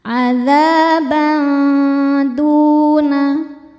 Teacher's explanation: Selanjutnya ada ikhfa aqrab karena tanwin fathah menghadapi dal. Dibacanya tanwinnya samar-samar menuju dal, kemudian dengungkan · Du mad tabi'i dhahiri sebab ada waw sukun sebelumnya dhammah. Dibacanya panjang 2 harokat.